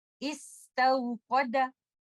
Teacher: ऐसा लगेगा कि लेटर दाल को मैं किसी हरका या वॉवल के साथ पढ़ रही हूँ